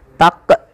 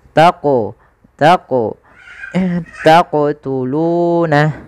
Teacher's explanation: Jadi ketika melafalkan huruf qaf itu ketika sukun dipantulkan. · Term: qalqalah